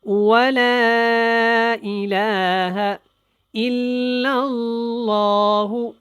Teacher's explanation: الہ کا جو ہا یہ لمبا نہیں کرنا، لام کو کرنا ہے کیونکہ اس کے اوپر کھڑی زبر ہے